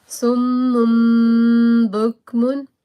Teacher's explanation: hide your voice and join the noon and ba together